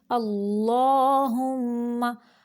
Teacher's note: हा को अक्सा हलक यानी हलक का वो हिस्सा जो सीने की जानिब है वहाँ से हा को निकालेंगे और मीम मुशद्दद का गुन्ना नाक की जड़ से निकालेंगे।